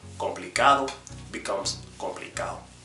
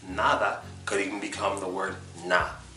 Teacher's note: the D that's in between vowels at the end of a word will disappear